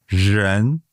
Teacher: the Chinese R is sometimes buzzy, like that zh sound. So when you hear someone say the word for person, ren, sometimes they say it kind of buzzy, like ren.